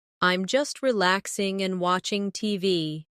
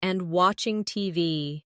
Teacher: Notice the flow. No long pause between relaxing and.